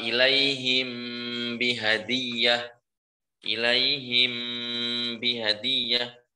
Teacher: Mim sukun selesai langsung pindah ke huruf ba dan satu makhraj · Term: ikhfa syafawi